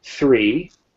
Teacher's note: so three, we go from a th to an e, a long e sound